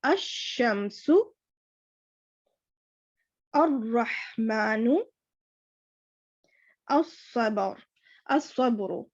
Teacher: ال میں جو لام ہے وہ فلی سائلنٹ ہے، اس کو بالکل بھی پروناؤنس نہیں کرنا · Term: لام شمسی